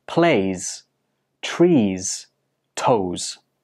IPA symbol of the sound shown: z